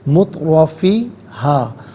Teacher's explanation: مترا، را پر زبر ہے، را پر زبر ہے تو اس کو پر کر کے پڑھیں گے